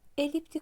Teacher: Eliptik sözündə düşür vurğu sonuncu hecaya